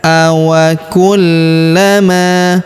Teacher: Huruf la kita tahan dan kita tekan karena terdapat tanda tasdid di atasnya. Awa kullama huruf ma kita panjangkan dua harakat karena terdapat alif di depannya ya.